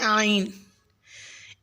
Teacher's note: اور عین کا مخرج وسط حلق سے ادا کریں